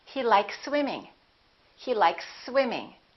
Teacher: you can prolong the S a little bit but don't pause don't interrupt the sound and don't break the two words · Here we have an S, likes, and here we have another S. When we have two same consonants, we only pronounce one.